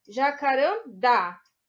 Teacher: A sílaba tônica mais forte é a última, então é uma oxítona.